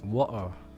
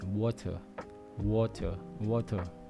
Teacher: They don't pronounce the T sound